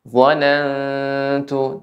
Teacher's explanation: Dhanantu ini ikhfa. Ikhfa juga ada gunnahnya juga. Tempo gunnah yang dipanjangkan